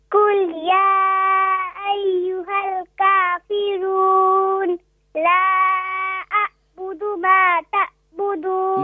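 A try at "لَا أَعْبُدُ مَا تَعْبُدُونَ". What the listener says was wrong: نہیں یہ عین کو آپ حمزہ نہیں پڑھیں. عین کا مخرج ہے, عین کی پرناس کہاں سے ہوگی؟ ہاں middle part of the throat, تو وہاں سے پرناؤنس کریں.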